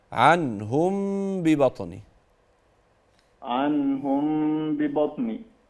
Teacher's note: الغنه في الميم لكن النون لا